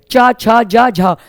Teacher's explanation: स्पर्श व्यंजन में भी चार व्यंजन संघर्षी माने गए हैं च छ ज झ लेकिन उनको कहते हैं स्पर्श संघर्षी